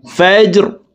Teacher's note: রকে ওয়াকফের ক্ষেত্রে সাকিন করে ফেলবো ফাজর সম্পূর্ণ আয়াত একসাথে বলছি দেখুন সালামুন হিয়া হাত্তা মাতলাইল ফাজর